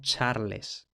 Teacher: Bien, para esto tenemos que saber o tenemos que haber más o menos supuesto que en francés, a partir del siglo V, lo que era una C en latín se palataliza al sonido che ante A